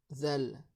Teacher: la lettre zal, on serre la langue entre les dents vers les dents du haut